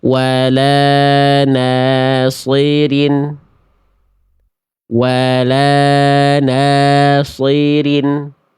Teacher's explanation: Banyak orang itu fokus ketika melafalkan huruf tebal itu hanya pada kadar tebalnya saja. Ketika harakatnya kasrah, banyak orang tidak membunyikan vokal i-nya dengan maksimal. Huruf berharakat kasrah itu baris bawah kan dibaca dengan bunyi vokal i ya.